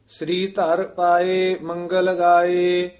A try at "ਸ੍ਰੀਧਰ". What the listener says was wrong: ਇਹ ਵੀ ਸ੍ਰੀ ਧਰ ਨੀ ਕਹਿਣਾ, ਹੇਠਾਂ ਰਾਰਾ ਹੈ।